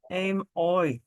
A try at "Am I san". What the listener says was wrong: Yeah. You're making that long, that I. Am I. You want to say the I, the AWY sound. saying I. Am I san.